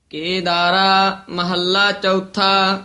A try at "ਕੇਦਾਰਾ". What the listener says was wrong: ਕੇਦਾਰਾ ਵੱਖਰਾ ਵੀ ਨਹੀਂ ਕਰਨਾ ਕੇਦਾਰਾ ਇਕੱਠਾ ਹੀ